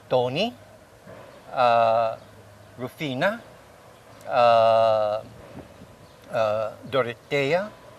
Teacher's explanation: it's the second to the last syllable all right and that's where the stress is at · the syllable stress is the second to the last syllable